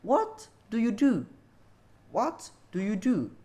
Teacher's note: stressing nya ada di Pertama Dan Terakhir tetapi Space antara stressing tersebut ada dua silabel di sana